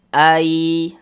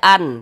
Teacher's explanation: Bunyi nun sukunnya dimasukkan ke huruf ya. Jadi kita baca ai, jangan dibaca an, tapi dia masuk melebur ke huruf ya ini. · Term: idgham bi gunnah